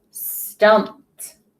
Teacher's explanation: That ED is making the T sound because of that P is an unvoiced sound at the end of the word.